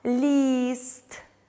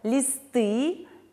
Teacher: лист и у нас звучит более долго листы и у нас звучит более кратко